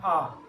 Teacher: आ है वो विवर्त स्वर है। इसके उच्चारण में मु है वो सर्वाधिक खुलता है